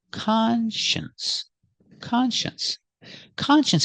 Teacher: sound sh plus the n n and the sence together conscience the stress is on the first syllable